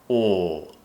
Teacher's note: tongue curls up, and it's very, very similar to how we produce the dark L, in fact. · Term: vowel sound